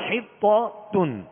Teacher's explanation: طا کو پر کریں گے، حروف مستعلیہ میں سے ہے، اور تا کو باریک پڑھیں گے